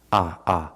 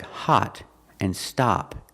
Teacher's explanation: it's an open Sound ah it's relaxed but open ah hot stop party and the Double T is pronounced with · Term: short ah sound